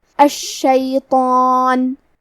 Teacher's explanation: تو کیونکہ اس کے پہلے حرف تو ہے لہذا ہمیں مد الف کو بھی بھاری آواز میں ادا کرنا ہے